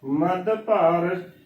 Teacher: ਇਸ ਨੂੰ ਮਧੂ ਭਾਰ ਨਹੀਂ ਬੋਲਣਾ ਮ ਧ ਨੂੰ ਦਲੈਂਕੜ ਨਹੀਂ ਬੋਲਣਾ ਮਧੂ ਭਾਰ ਬੋਲਾਂਗੇ ਗਲਤ ਉਚਾਰਨ ਹੋਏਗਾ ਇਸਨੂੰ ਮਧਭਾਰ ਹੀ ਬੋਲਣਾ ਹੈ